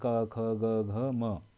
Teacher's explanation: सीधे कंठ से आवाज आ रही है